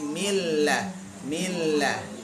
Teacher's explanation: Jadi huruf lam dari ujung sisi lidah ya, bertemu dengan gusi atas.